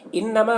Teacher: نون مشدد ہے، یہاں پر غنہ کے ساتھ پڑھنا ہے. ما میں الف مدہ ہے، اسے ایک الف کے برابر کھینچ کر پڑھیں گے.